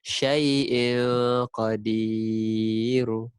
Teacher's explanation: tanwin bertemu huruf qaf. Ikhfa hakiki. Maka kita dengung